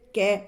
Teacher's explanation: ये जो कै वाली पूरी लाइन है इनको कंठ वर्ण बोलते हैं, ये कंठ से बोले जाते हैं।